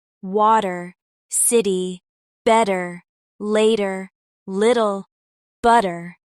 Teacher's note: You can hear the soft D sound instead of the clear T. That's called a flap T sound, and it's one of the most common American sounds you'll hear.